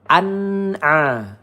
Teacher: Kemudian wali wali an nun sukun bertemu ain ya izhar halq tidak boleh dipanjangkan, tidak boleh didengungkan ya kita baca dengan jelas